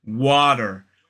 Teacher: So notice that the T in a general American pronunciation, that unaspirated T, sounds much more like a D sound, water. Whereas in a modern British RP accent, it sounds like water, water, t, water.